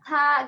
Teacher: ketika membacakan huruf-huruf hamas gitu ya, terasa ketika misalkan fa ya, ada udaranya